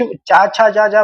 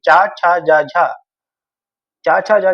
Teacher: तो अब हम जब कुछ चा छा जा जा बोलते हैं तो हमारी जीभ जो है ना ऊपर लड़ती है, जीभ तालु में छूती है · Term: तालव्य